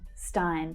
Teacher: That's the /aɪ/ as in 'buy' vowel sound.